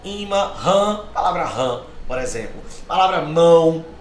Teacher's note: são marcas nasais, ou seja, estão aí para mostrar que o som sai pelo nariz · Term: marcas de nasalidade